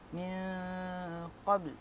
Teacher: nun mati berjumpa dengan qaf adalah ikhfa hakiki, dibaca secara dengung 2 harakat